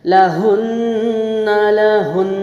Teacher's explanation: नून के मखरज पे ज़बान लगा के नाक में आवाज़ जाएगी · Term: गुन्ना